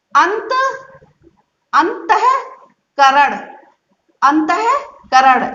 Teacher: ये ता वर्ण जो है वो दंतव्य वर्ण है, दंतव्य वर्ण है यानी दांत से बोलने वाला है। जब आप ये अंक की बिंदी को बिंदी की बाद जब ता साउंड निकालोगे, तब जब आप अपनी जीभ से कंठ से आने वाली वायु को जब रोकोगे, तब आधा ना ही साउंड निकलेगा।